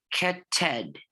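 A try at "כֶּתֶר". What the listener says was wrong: Keter. No, it's a resh. Oh, so the difference is, and I know it's a very, very slight difference. The ratio is more round here. You see that? It's more round.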